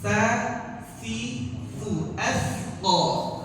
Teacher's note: Ya, di sini ada huruf tha. Ya, sama makhrajnya seperti huruf zal. Ujung lidah kita nempel di gigi seri atas.